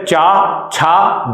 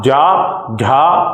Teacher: तो लास्ट के 3 का उच्चारण गहरा होता है, तो वे हो गए हमारे पास सघोष। पहले 2 जो होते हैं उनका उच्चारण थोड़ा उथला होता है, उसमें गला हमारा इतना कंपन नहीं कर पाता, तो वे कहलाते हैं अघोष